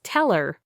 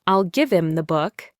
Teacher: You're listening for the clear sound of the word him or her, but you're only hearing im or attached to the previous word.